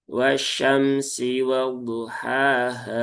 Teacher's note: H-nya dua harakat ya, jangan panjang-panjang ya, cukup dua harakat saja.